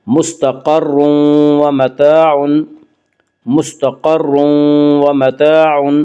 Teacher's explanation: یہاں تنوین کے بعد یومنو کے 4 حرفوں میں سے واو، اس لیے یہاں پہ ادغام بالغنہ ہوگا